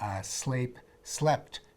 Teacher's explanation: when you add an extra little bit to the end of a verb like that t at the end of sleep you tend to shorten the vowel to compensate so the word will fit into the metronome of speech e